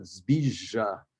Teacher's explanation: But this zbizha, that is a palatalized, the second zh is palatalized